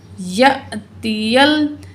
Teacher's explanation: तो यहाँ जो है अलिफ़ है और अलिफ़ के ऊपर जब हरकत आ जाए तो वो हमज़ा बन जाता है, और हमज़ा जब साकिन हो जज़म हो तो झटके के साथ पढ़ा जाएगा